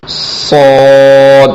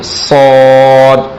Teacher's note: اس میں سیٹی کی آواز نکالی جائے گی اور پڑھا جائے گا صاد، موٹا کر کے پڑھیں گے صاد۔ اور اس کے بعد جو حرف ہے کہ زبان کی کروٹ دائیں طرف لگائیں یا بائیں طرف، اوپر کی طرف لگانی ہے، دائیں طرف یا بائیں طرف لگائیں اور پڑھیں ضاد ضاد تو۔